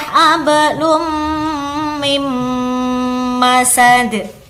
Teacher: nunnya kita masukkan kepada huruf mim dengan mendengung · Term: idgham bi gunnah